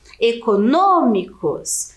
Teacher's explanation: Então, a antepenúltima sílaba aqui é a mais forte e ela é acentuada. As palavras que possuem a antepenúltima sílaba tônica, que é a sílaba mais forte, nós chamamos de proparoxítonas, certo?